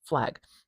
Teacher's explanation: something interesting happens with this vowel sound before a velar sound. And what happens is it gets raised. It gets raised, so it turns into a diphthong, actually.